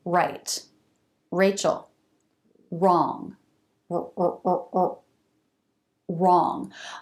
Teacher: for a beginning R, the lips do round more. They come into a tighter circle.